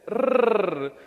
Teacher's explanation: the rolled r, does not exist in the English sound database